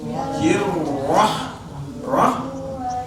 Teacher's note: rahamnya kebuka tapi makrajnya menyentuh bagian tengah tenggorokan